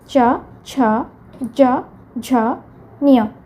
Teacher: ଏମାନେ ତାଳୁରୁ ଉଚ୍ଚାରିତ ତେଣୁ ଏମାନଙ୍କୁ ତାଲବ୍ୟ ବର୍ଣ୍ଣ କହନ୍ତି।